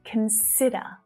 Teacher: Can you hear the stressed syllable? Where is it? It's in the middle. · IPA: /kən 'sɪ də/